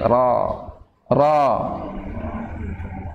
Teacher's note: Karena dia tebal itu mempunyai, ketika dia fathah berarti pangkal lidahnya yang naik. Ketika mau tebal, pangkal lidahnya naik. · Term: huruf ra